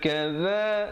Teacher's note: za di hujung lidah